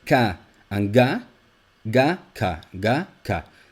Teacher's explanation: The difference is that with Ga, your vocal cords are vibrating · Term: voicing